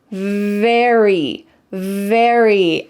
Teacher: With the V sound, your top teeth are on your bottom lip.